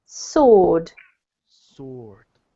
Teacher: so the W is basically silent